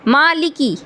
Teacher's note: मीम का मखरज भी बिल्कुल आसान है, होठों से है। मीम का मखरज क्या है कि दोनों होठों के खुश्क हिस्से से अदा होता है। मालिकी, मीम के बाद लाम है, लाम के मखरज में भी परेशानी नहीं है, काफ के मखरज में भी परेशानी नहीं है।